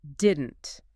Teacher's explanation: There's a little stop in the middle of the throat when you say it.